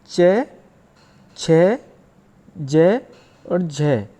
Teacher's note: वे व्यंजन वर्ण जिनके उच्चारण में कुछ घर्षण के साथ वायु निकलती है, यानी ये कहें कि जब हम इनका उच्चारण करते हैं तो हमारी वायु आसानी से बाहर नहीं निकलती है। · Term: स्पर्श संघर्षी व्यंजन